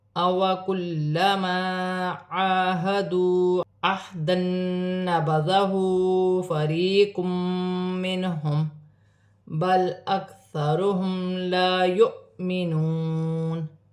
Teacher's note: عین پر کھڑی زبر ہے، اسے بھی ایک الف کی مقدار کھینچ کر پڑھا جائے گا